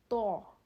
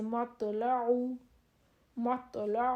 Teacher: تو کی آواز موٹی اور جھٹکے والی ہوتی ہے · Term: موٹی اور جھٹکے والی آواز